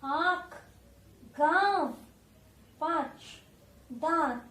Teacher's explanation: जब अ के ऊपर चंद्र आ जाता है तब हम उसे कहते हैं अनुनासिक। इसे नाक और गले दोनों से बोला जाता है। नाक से भी और गले से भी इसका साउंड निकलता है।